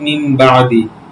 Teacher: নুন সাকিনের পর বা আসছে তাই নুন সাকিনে ওইটা মিম দ্বারা পরিবর্তন করে পড়তে হবে